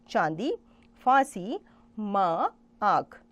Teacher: जिस ध्वनि के उच्चारण में हवा मुख और नाक से निकलती है वह ध्वनि अनुनासिक होती है। इसमें स्वर के ऊपर चंद्रबिंदु का चिन्ह होता है, जैसे चांदी, फांसी, माँ, आँख।